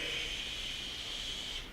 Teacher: the word shaping that's me taking that noise and being like I'm not gonna move my vocal cords I'm just going to let air come out